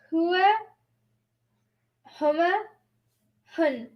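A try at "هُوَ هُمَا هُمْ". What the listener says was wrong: There's no N till the end.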